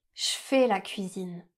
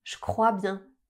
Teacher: devant les mots qui commencent par le son f, que, pe, se ou te, on va prononcer le son ch au lieu du son je.